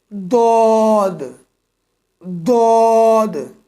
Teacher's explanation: زبان کی کروٹ اور اوپر کے داروں کی جڑ سے ادا ہونے والا حروف